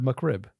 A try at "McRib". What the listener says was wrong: You said muck rib? Muck, M-U-C-K, like mud. Your Welsh accent coming through. It's not muck.